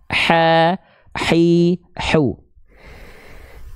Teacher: dulu makhj sifatnya kita bahas Mak kecil di mana Tadi dia dilafalkan dari bagian tengah tenggorokan wastul halqiun